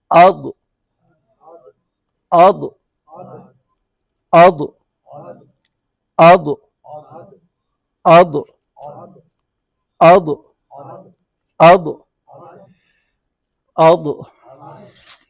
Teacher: تو کلکلہ ضاد میں نہیں ہے۔